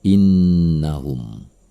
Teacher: Maka ini adalah wunnah. Cara membacanya adalah dengan mendengungkannya selama 2 harokat.